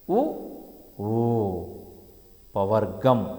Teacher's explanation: పెదవి సహాయము చేత పలకబడతాయి కాబట్టి వీటిని ఓష్ఠ్యములు అన్నారు